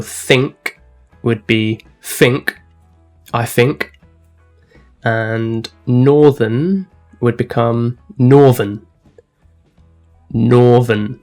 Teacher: Okay, and another really important one to remember when you're listening to a Cockney accent is replacing the TH sound in English with the F sound or the V sound